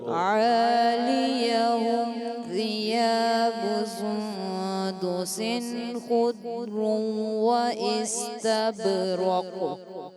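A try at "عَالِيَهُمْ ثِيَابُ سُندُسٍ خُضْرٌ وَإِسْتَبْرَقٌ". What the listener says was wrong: خضر تھوڑا سا غنہ کمزور ہوا دوبارہ سے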